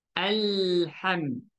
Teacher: Maka jangan kita buat allaham. Caranya ringankan sentuhan pada lam, jadikan dia tawassut.